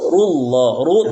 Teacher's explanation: ru dibaca tebal karena ee huruf harakatnya domah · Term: ru tebal